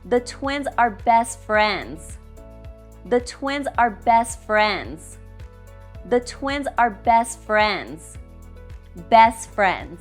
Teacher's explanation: We drop the T in best.